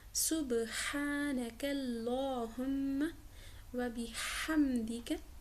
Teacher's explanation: با پر کلکلا ہوگا کیونکہ با پر سکون کا نشان ہے